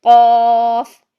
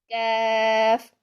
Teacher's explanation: قوف موٹا حرف ہے، نقطوں والا قوف، اور کاف جو ہے یہ باریک حرف ہے